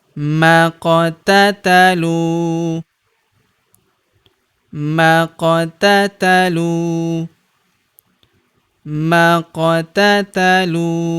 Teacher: Huruf lu kita panjangkan dua harakat karena terdapat wau sukun di depannya. Alifnya tidak dibaca atau dianggap tidak ada.